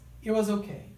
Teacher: A letra T da palavra it, ela não é pronunciada, tá?